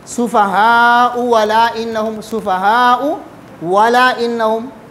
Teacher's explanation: ابدال، یعنی دوسرے حمزے کو واو سے بدلنا